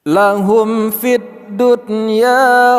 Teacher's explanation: Mim mati temu dengan fa izhar syafawi kita baca secara jelas. Dunya nun mati temu dengan ya, ini tidak kita baca secara idgham bi gunnah karena idgham bi gunnah ada pengecualian, salah satunya pada kata dunya.